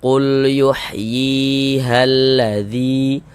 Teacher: Nah, maka huruf yang memiliki harokat kasroh tersebut dibaca panjang begitu. Sehingga yi dibaca panjang. Nah, mad tabi'i panjangnya 2 harokat.